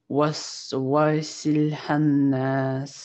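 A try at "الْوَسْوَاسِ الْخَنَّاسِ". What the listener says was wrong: А буква не ха, это ха-ха. Ха. Если мы начинаем, то здесь начинается, смотри, с хамзат-аль-васль. Ну, если вместе, да, мы действительно лям начинаем. Если просто это слово прочитать, то будет аль-васваси. Аль-васвасиль ханнас. Ха-ха. Ха, вот прям твердое такое. Будто хрип. Ха.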